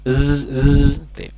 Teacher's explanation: huruf Zai juga memiliki sifat saofir ataupun berdesis